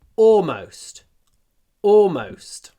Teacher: я не произношу звук Л в этом слове. Я говорю, в принципе, almost.